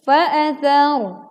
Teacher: Ra sukun didahului huruf berharokat fathah maka dibaca tebal